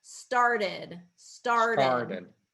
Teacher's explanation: yeah so that's what's hard is kind of um with that that tap t it kind of becomes a d and then it flattens the r a little bit